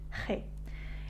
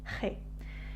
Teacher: It's kind of like trying to say H, but putting a more rumbling sound into it. It's kind of like from the back of your throat, G. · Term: Jota